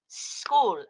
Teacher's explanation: aware that we don't say is cool we say school and we cannot say s cool for example because there is no vowel in there